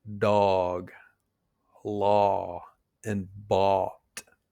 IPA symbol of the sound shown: ɔ